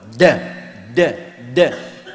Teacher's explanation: Da itu paling mudah karena tinggal meledakkan, ledakan dari dalam. Qutbulah, dikeluarkan dari dalam, keluar. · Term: qalqalah